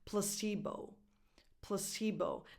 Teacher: So the first vowel is just a schwa. It's not a defined pla. It's pl, plus c, because the stress is on that second syllable.